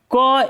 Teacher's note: क एक अघोष वर्ण है